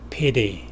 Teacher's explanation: 이 T 발음이 거의 D처럼 들리죠.